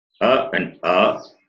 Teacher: the place of pronunciation is throat, and therefore they are called gutturals